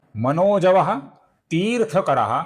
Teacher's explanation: मनोजवाह के विसर्ग का आगे त आने के पश्चात अपूर्ण स बनता है जो आगे वाले त को जुड़ जाता है जो आपको यहां पर दिख रहा है ती दीर्घ है इसका हमें ठीक से लंबाई से ही उच्चारण करना है। · तीर्थ करा का जो विसर्ग है इसके आगे वसुरेता का व आने के पश्चात इसका ओ हुआ है।